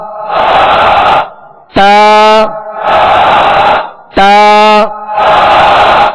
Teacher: زبان کی نوک اور اوپر کے دانتوں کی جڑ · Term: تا کا مخرج